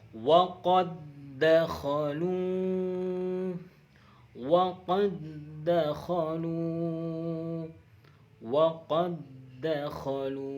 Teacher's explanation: Tetapi ketika huruf dal qalqalah ini bertemu dengan dal yang hidup, ini huruf qalqalahnya tidak berlaku. Huruf qalqalahnya tidak berlaku, tidak memantul, tidak mempunyai sifat qalqalah, tapi mempunyai sifat idgham. Namanya idgham mutamathilan.